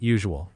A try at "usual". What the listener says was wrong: Usual. Say it like usual. Closer. Soften that middle part. Usual. Yep, a soft z, like in measure. Usual.